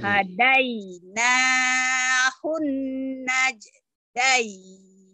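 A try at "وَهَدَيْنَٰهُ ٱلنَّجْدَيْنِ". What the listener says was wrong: Nah, kol-kolahnya nggak keluar tuh, keluarin kol-kolahnya. Naj. Wa hadainahun najdain.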